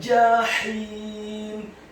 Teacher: Kata jahim, huruf jimnya dibaca tafkhim, tebal, fathah 1 harokat.